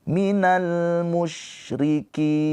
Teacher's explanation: Nunnya ini sukun karena berhenti. Jadi ki mad arid li sukun dibaca panjang ki-nya boleh 2, boleh 4, boleh 6 harokat